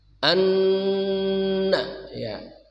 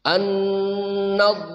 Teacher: gunnah dengung yang bertasydid sepanjang 2 harokat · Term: gunnah musyaddadah